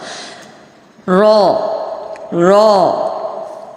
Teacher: زبان کی نوک اور تالو، زبان کا جو سامنے اوپر کا جو تالو ہے وہاں سے ادا ہوگا